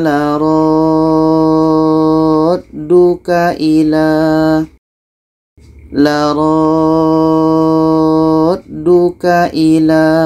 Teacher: Cara bacanya ra ini kita panjangkan 6 harkat baru masuk ke huruf yang ada tasydid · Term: mat lazim kilmi mutsaqqal